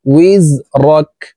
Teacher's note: কাফকে ওয়াকফের ক্ষেত্রে সাকিন করে ফেলবো